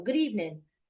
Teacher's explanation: if you're greeting someone without a title feel free to use a falling tone